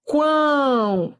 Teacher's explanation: Depois, ó, quão. Semivogal, vogal, semivogal. Olha o O com som de U. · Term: Tritongo